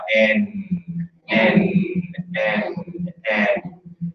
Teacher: With N, we usually talk about how the front of the tongue is touching the alveolar ridge. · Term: N sound